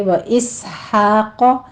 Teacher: سین کی سیٹی کی آواز کے ساتھ ہمس کے پڑھیں گے اور آگے قاف کو پر پڑھنا ہے